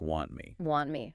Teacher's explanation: It highlights that the T at the end of want is also typically dropped before the M sound in me. · That final T vanishes before the next consonant.